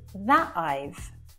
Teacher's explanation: So you don't hear the T, but I'm stopping the air from coming out of my mouth and then it's released. So it's quite subtle, but you do hear a difference. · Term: glottal T